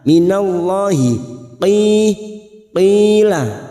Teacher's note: Huruf qaf ini huruf isti'la kita baca tebal.